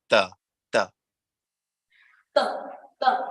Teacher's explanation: So that TH, now try to say that TH with a slight influence of T sound. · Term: TH sound